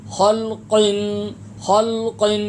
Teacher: ڈنڈی والا کاف نہیں پڑھنا، موٹا اور پر کاف پڑھنا ہے